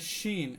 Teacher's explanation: হ্যাঁ, তারপরে শিন, এটা জিহ্বার মাঝখান থেকে অটোমেটিকলি গোল হয়ে কি হয়, পুরো আওয়াজটা ছড়িয়ে পড়ে, এটা সব থেকে বেশি বাতাস বাহির হয়